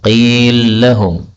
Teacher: lam ketemu lam boleh idgham